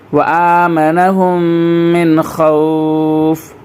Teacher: آ کو کھینچ کے پڑھنا ہے، اس کے اوپر کھڑا زبر ہے، وآمنہم من خوف۔